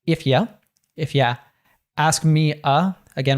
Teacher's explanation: But there's, again, a lot of connected speech in this line. If you, so you, oftentimes we natives will reduce that to ya or ya, as he does here.